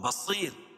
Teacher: یہاں بھی را باریک پڑی جائے گی کیوں وہی قاعدہ کہ را ساکن ما قبل یا ساکن ہو تو را ہر حال میں باریک پڑی جاتی ہے